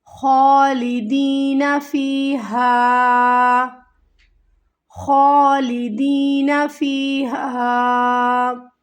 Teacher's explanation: خا کو ہمیں کھینچنا ہے